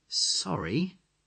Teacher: If it's loud and you're in a hurry, you can just say, Sorry, with a rising tone